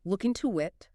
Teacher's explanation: When spoken quickly, look into it transforms completely. It sounds like one continuous word, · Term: phantom sounds